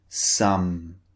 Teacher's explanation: sound hmm as in some notice the shape of the lips the lips are closed and the air is coming through the nose this time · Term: voiced sound